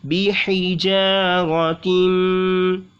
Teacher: जा में अलिफ मद्दा और हा को निकालेंगे हलक के दरमियान से, बिहिजारतिन, तिम, यहाँ पे भी गुन्ना होगा, इदगाम का कायदा इसलिए।